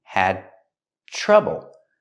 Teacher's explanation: The D in had is before the T, so it's a stop D.